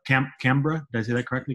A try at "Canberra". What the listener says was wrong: Canberra, mate. No, we shorten everything here, so it's just Canberra.